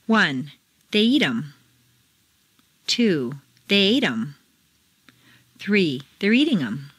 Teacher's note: in fluent speech the th of them is frequently dropped as is the H in other object pronouns him her